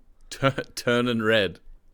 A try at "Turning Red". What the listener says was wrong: The reason that confused me was because you said it like there was an apostrophe at the end of turning rather than a G. Turn and Red.